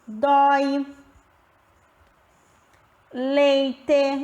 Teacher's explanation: Dentro desse ditongo, o encontro de duas vogais, nós temos a vogal mais a semivogal, que pertence à mesma sílaba durante a divisão silábica e são pronunciadas na mesma emissão de voz